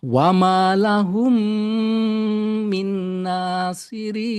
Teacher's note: Atau kalau di istilah Indonesia idgham mimi karena Mimi. mim ketemu mim. Tinggal mimnya ini dibaca dengan gunnah ya.